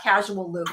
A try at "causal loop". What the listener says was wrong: Causal loop. It's a causal loop, not casual. Casual.